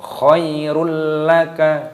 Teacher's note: Dhammah tanwin bertemu dengan lam idgham bila gunnah, diidghamkan dimasukkan tanpa berdengung